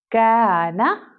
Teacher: باریک کاف ہے اس لیے الف بھی باریک پڑھا جائے گا، یعنی الف کو ہم ترکیق کی کنڈیشن میں پڑھیں گے.